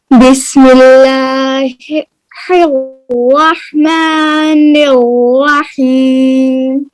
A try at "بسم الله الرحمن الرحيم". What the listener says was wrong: منہ کھولے نا. نیوا نہیں، الرحیم الرحیم.